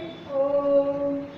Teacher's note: तो ये आपका प्लुत स्वर है जिसमें 3 मात्रा का समय लगता है